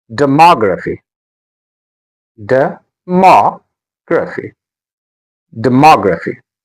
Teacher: The stress is on ma.